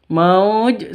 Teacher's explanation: Nah, seperti biasa waw mati diawali dengan fathah itu sifat lin, terus diikuti dengan huruf hidup dan berada di waqaf, maka namanya mad lin, seperti itu. Fi mauj panjangnya boleh 2, boleh 4, boleh 6 ketukan seperti mad arid lisukun.